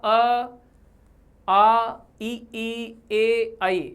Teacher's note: अर्धवृत्ताकार, इन स्वरों के उच्चारण में होंठ गोल नहीं होते हैं